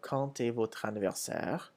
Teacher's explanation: When quand comes before a vowel, such as in quand, the D changes to a T sound